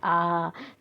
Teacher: जो आ स्वर है वो केंद्र यानी कि बीच से बोला जाता है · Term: केंद्रीय स्वर